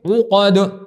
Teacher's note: عین درمیان حلق سے نکلتا ہے